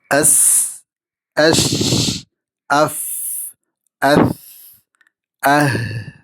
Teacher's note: മഖ്റജിൽ പൂർണ്ണമായ അടച്ചിടൽ ഇല്ല. Vocal cords open ആയിരിക്കും. ശബ്ദവും കാറ്റും ഒരുമിച്ച് നീണ്ടുപോകുന്നു. അതുപോലെ കാറ്റ് ഒഴുകുന്നതായി വ്യക്തമായി അനുഭവപ്പെടും. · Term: ഹംസ്